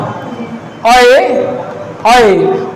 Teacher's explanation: अ बोला जाता है कंठ से और ए बोला जाता है तालव्य से, तो इसे हम कहेंगे ना कंठ तालव्य